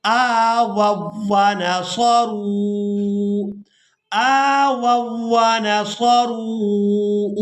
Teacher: یہاں پر قاعدہ یہ نوٹ کر لیں کہ دو حرف ایسے جمع ہو جائیں کہ پہلا حرف ساکن ہو اور بعد والا حرف مشدد ہو، تو پہلے ساکن حرف کو چھوڑ دیا جاتا ہے، مشدد حرف کو ادا کیا جاتا ہے۔ تو یہاں پر ہم نے پہلی واو کو واو مشدد کے ساتھ ملا کر ادا کرنا ہے